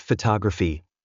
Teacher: we stress the first syllable PPH but in the word photography the stress moves to the second syllable